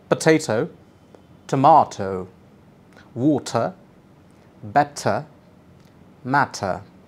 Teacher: switch to the British pattern and use an explosive sound for the letter t